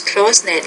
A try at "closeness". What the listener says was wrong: No, closeness. You're leaving off that final S, because closeness